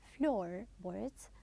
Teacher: Also, floorboards, we will stress the first part